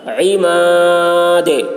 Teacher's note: عین حلق سے ادا کریں گے، دال میں قلقلہ